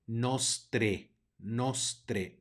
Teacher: tenemos una ae que es un diptongo y lo vamos a pronunciar como e